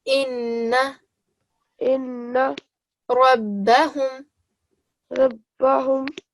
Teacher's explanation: So note how I am putting extra pressure on the ba and the noon.